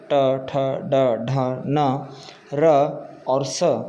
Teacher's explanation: ट, ठ, ड, ढ, न, र और स का उच्चारण मूर्धा से होता है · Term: मूर्धन्या